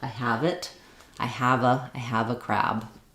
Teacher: you think about it being like have it have it that the V is going to link to the next vowel sound